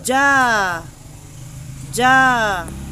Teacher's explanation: Or, pwede rin na nasa itaas siya ng fatha sign. So, ang pagbigkas nito, katulad nung alif mad, na ito ay vowel a. Yung tunog, yung haba ng tunog ay 2 counts long. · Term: mad with dagger alif